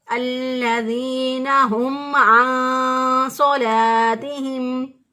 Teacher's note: گلے کے درمیان سے عین کو نکالیں گے اور اس کو حمزہ سے نہیں بدلیں گے